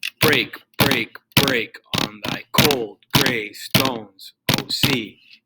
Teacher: And then you got spondaic, which is kind of like screaming at you. It's basically just a whole bunch of accented syllables everywhere.